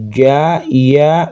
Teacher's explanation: Makhraj ja itu wastul lisan tengah lisan menempel kepada langit-langit mulut.